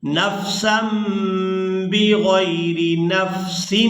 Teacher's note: اب یہاں پر آپ لوگ یہ چھوٹی میم دیکھ رہے ہیں، تنوین کے فوراً بعد با آ گئی ہے، تو یہاں تنوین میں جو نون کی آواز ہے اس کو ہم نے میم کے ساتھ بدل کر ادا کرنا ہے، اس کو کہتے ہیں اقلاب کرنا۔